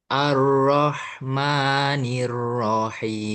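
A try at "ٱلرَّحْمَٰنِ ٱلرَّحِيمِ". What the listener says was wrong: Kayak getarkan dikit aja ro-nya itu. Ar-Rahmanir-Rahim.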